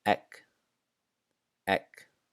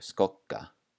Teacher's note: So in these words, the G makes more of a K sound and it's also doubled. It's held for longer.